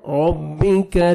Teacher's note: کاف کو باریک پڑھنا ہے